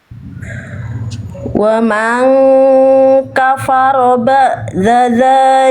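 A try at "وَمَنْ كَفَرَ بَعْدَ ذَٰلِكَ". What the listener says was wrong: Ainnya? Kurang neken Bunda sedikit. Ain sukunnya ba. Kurang duduk di makhrajnya tadi. Bunyinya agak nanggung. Wa man kafara ba'da dzalika.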